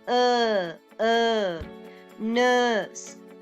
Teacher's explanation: your tongue should be in the middle when you produce it but it's a little bit to the back